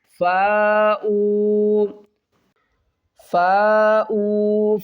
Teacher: اور فا الف مد زبر فا 5 الف کی مقدار کھینچ کر پڑھیں گے اور حمزہ کو واو کے ساتھ ملا کر پڑھیں گے۔